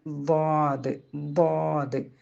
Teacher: അപ്പൊ നാവിന്റെ അരിക് മേലെ അണപ്പല്ലിന്റെ ഊനിലേക്ക് ചേർത്ത് വെച്ച് ഉച്ചരിക്കുക അപ്പൊ ഇതിന് കാറ്റ് ഒട്ടും പുറത്ത് പോകാത്ത ഒരു അക്ഷരമാണ് ളാദ് · നാവിന്റെ അരിക് മേലെ അണപ്പല്ലിന്റെ ഊനിലേക്ക് ചേർത്ത് വെച്ച് ഉച്ചരിക്കുക അപ്പൊ ഇതിന് കാറ്റ് ഒട്ടും പുറത്ത് പോകാത്ത ഒരു അക്ഷരമാണ് ളാദ് ളാദ് അപ്പൊ